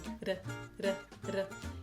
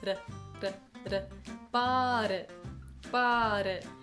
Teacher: Basically, It's just a really fast D d, d, d, your tongue is just tapping very quickly, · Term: flap T